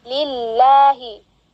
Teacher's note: jalannya dibaca tarqiq atau tipis